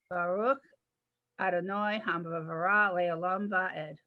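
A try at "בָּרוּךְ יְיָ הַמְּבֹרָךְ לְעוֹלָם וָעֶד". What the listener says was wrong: Nice job.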